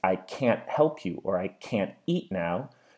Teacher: you're not going to hear me saying or pronouncing the T noise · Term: glottal replacement